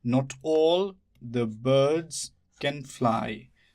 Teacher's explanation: the is not stressed. Birds is stressed. Can is not stressed. Fly is stressed.